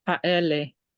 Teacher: Where's the stress? On the second syllable. It's penultimate.